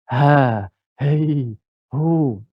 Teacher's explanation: huruf ha ni huruf yang paling jauh daripada mulut